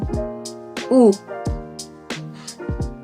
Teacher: vokal U dihasilkan dengan lidah di posisi belakang, bibir bulat dan mulut agak tertutup. U jadi mulutnya ee bulat dan bibirnya bulat dan mulutnya agak tertutup.